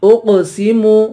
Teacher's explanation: حمزہ کو قاف سے ملا کر قاف پہ قلقلہ کریں گے اور قاف کو پر پڑھیں گے